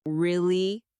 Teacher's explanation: when they are surprised, their voice goes up.